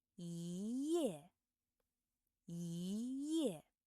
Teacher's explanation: you need to change the first tone to the second tone · If the character after yi is the fourth tone, then the character yi should be pronounced as the second tone.